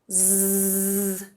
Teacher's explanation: if you say Z and you put your hand on your throat, Z, there's vibration on your hand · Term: voiced consonant